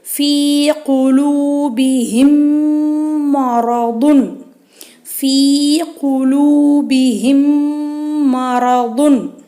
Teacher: சுக்குன் பெற்ற மீம் பின்னாடி மீம் வந்திருக்கு, மீம் மேலே ஷத்து வந்திருக்கு. அதனால் குன்னா செஞ்சு ஓதணும்